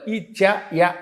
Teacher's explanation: ఇచ్చు యశానాం తాలుహు తాలవ్యంతో పలకాలి ఇచ య అందుకే తాలువులు పనిచేస్తూ ఉంటాయి ఏదైతో కంఠాలు ఏ అన్నప్పుడు కంఠము